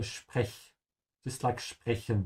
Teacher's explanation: whenever the S comes before a P, the S is pronounced like sh